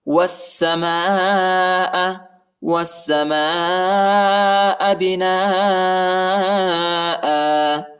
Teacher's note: واو کو سین کے ساتھ ملانا ہے، سین پر جو ہے شد آیا ہے اور الف اور لام نہیں پڑھا جاتا ہے، الف اور لام کے اوپر حرکت نہیں ہے، اور سین کو جو ہے شدت کے ساتھ پڑھنا ہے، سختی کے ساتھ